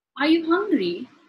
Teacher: rising intonation in which your voice Rises at the end of the sentence